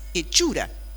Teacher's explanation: Lo que pasa es que factura tiene la raíz fact, que es la raíz latina, y hechura tiene la raíz evolucionada, lo vemos incluso en esa supresión de la consonante inicial, esa F inicial que no toleró el español de la lengua latina